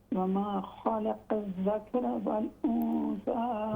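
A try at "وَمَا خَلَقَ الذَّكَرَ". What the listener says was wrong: وما خلق الذکر، کاف پر زبر بھی ہے.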